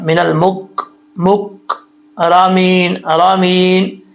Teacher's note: کاف سخت کاف ہے، دوسرا سخت تالو کے ساتھ زبان لگے گی، زبان کی جڑیں، تو یہ کاف پڑھا جائے گا